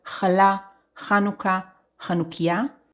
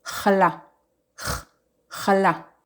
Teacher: The sound is Ch. It comes from the throat. You don't need to overpronounce it. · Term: the letter Chet